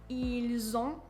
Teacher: the S becomes the Z sound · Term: liaison